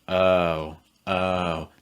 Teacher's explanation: and the ah sound just some quick notes about mouth position o sound is a diphthong we don't want to make it too tense at the end it's like oh oh no so my mouth starts a little · too tense at the end it's like oh oh no so my mouth starts a little bit more open and then closes with slightly rounded lips · Notice how my mouth starts a little bit more open and then closes with slightly rounded lips. Oh. Versus the aw sound, where my mouth is wider, but the back of my tongue is high and the front of my tongue is down.